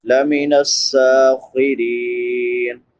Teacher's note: خو حروف مستعلیہ میں سے ہے یعنی موٹے حروف میں سے، اس کو پر پڑھیں گے، را باریک ہوگی کیونکہ را کے نیچے زیر ہے۔